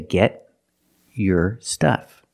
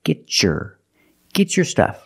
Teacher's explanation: I have a t before a y making the e sound I can change the T to a CH sound like chicken